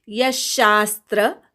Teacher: यशास्त्र विसर्गाचा श, यच्या विसर्गाचा श म्हणायचा